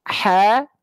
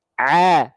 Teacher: Cuman bedanya ha kecil dialirkan nafasnya karena dia ada sifat hams. Kalau ain dilafalkan tanpa aliran nafas. Ha, tahan nafasnya, a, keluarnya ain.